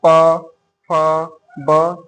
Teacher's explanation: जब प बोलेंगे तो हमारा ओठ आपस में, दोनों ओठ आपस में मिलता है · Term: ओष्ठ